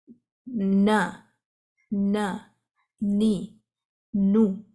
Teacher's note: ہم کہیں نہ، نی، نو، اس میں بھی یہاں پہ ٹچ کیا ہے، آواز منہ سے بھی آ رہی ہے اور ناک سے بھی، سو دونوں مخارج یوز ہوں گے نون کی ادائیگی کے لیے۔ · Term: نیزلائزیشن